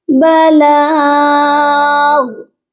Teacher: ہم یہاں پر اگر وقف کریں گے تو ہم غن نہیں کریں گے، غائن کے اوپر جو تنوین ہے اس کو ڈراپ کریں گے اور غائن ہو جائے گا ساکن